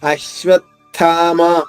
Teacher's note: వా పైన ఆఘాతం తీసుకుంటూ థాలోని మొదటి అక్షరం తా అల్ప ప్రాణిత ద్విత్వం చేసుకుంటూ అది అశ్వత్థామ. · కింద ఉన్నది ఉత్తుత అంటే మహాప్రాణి థ, కాబట్టి 2 వేరు అక్షరాలు అయినాయి కాబట్టి దాని ముందు ఆఘాతం ఉంది.